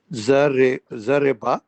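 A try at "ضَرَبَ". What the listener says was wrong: نہیں پورے زبر کے ساتھ ہیں یہ تینوں باب. ذرا با، ذرا با بھی زبر کے ساتھ ہے.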